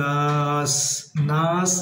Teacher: নুনে মিমের তাসদিদ হলে ওয়াজিব গুন্না সুতরাং গুন্না করব আর নুনের ভিতরে 3 আলিফ টান হবে